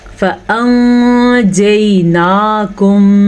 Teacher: वैसे तो हरूफ इख्फ़ा 15 हैं, अगर उनमें से कोई सा भी एक हर्फ नून साकिन या तनवीन के बाद आएगा तो हम नून साकिन या तनवीन को छुपा के गुन्ने के साथ पढ़ेंगे